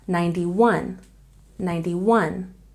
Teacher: when we have numbers like this remember to put the stress at the end